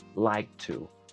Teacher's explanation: ese sonido de K se mantiene por un momento y se libera con la t